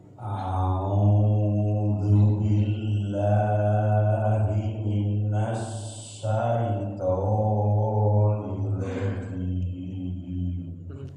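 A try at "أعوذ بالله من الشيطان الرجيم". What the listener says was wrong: Nirnya ditekan lagi, Pak. Nir rajim.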